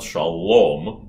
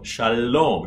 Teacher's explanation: this is a forward mediterranean el as in italiano